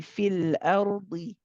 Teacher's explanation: So we say fil ardi, the same amount of time for both. The dad again is heavy still, even with the kasra.